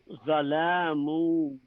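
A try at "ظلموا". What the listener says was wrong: I don't want to hear an alif here. Zalamu.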